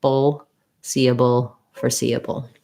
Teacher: So there's a little schwa before my dark L. I'm basically moving from the b to the ul with as little vowel as possible. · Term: dark syllabic L